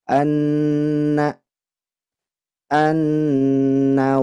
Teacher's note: Nun tasdid maka hukumnya gunah musyaddadah ditahan gunahnya dua harakat